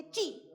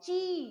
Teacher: छोटी ई में छोटी आवाज आती है ची और बड़ी में ची आवाज खींच कर आती है